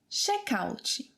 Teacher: we kind of add this vowel sound ‘ee’ at the end of the word